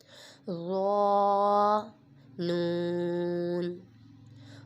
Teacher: ظا میں سیٹی نہیں نکلنی چاہیے اور اس کو پر بھی پڑھیں گے کیونکہ یہ حروف مستعلیہ میں سے ہے۔